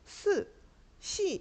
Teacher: 그래서 스 이렇게 발음해 보면 시옷 발음할 때 혀가 위에 천장이 딱 붙는게 아니라 살짝 공간이 떨어져 있습니다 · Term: 마찰